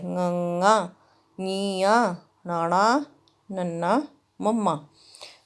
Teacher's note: ਜਿਨ੍ਹਾਂ ਅੱਖਰਾਂ ਨੂੰ ਬੋਲਣ ਵੇਲੇ ਆਵਾਜ਼ ਨੱਕ ਰਾਹੀਂ ਆਉਂਦੀ ਹੈ ਉਹਨਾਂ ਨੂੰ ਅਨੁਨਾਸਕ ਜਾਂ ਨਾਸਕ ਅੱਖਰ ਕਿਹਾ ਜਾਂਦਾ ਹੈ। ਪੰਜਾਬੀ ਦੇ ਵਿਅੰਜਨ ਅੱਖਰਾਂ ਵਿੱਚੋਂ ঙ, ਞ, ਣ, ਨ, ਮ, ਇਹ 5 ਨਾਸਕੀ ਅੱਖਰ ਹਨ।